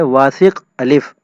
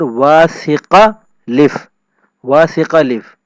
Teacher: تو پورے طریقے سے پڑھیں واسق الف، اور ایک یہ کہ الف کا جو شروع کا الف ہے وہ گرا دیں اور اس کے نیچے جو زیر تھی وہ ہم واسق کے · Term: اخفاء الف